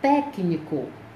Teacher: Técnico, a sílaba tônica é tec. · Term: proparoxítonas